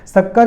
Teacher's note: शक्कर के स का उच्चारण तालू से होता है